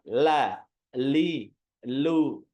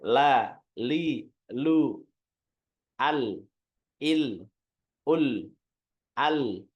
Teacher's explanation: huruf lam Nah itu menyimpangnya ke sisi kiri dan kanan lidah